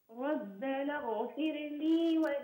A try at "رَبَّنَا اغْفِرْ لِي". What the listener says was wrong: لا تقلقلي الراء أختي. ربنا اغفر لي، اغفر ولا تقولي اغفر.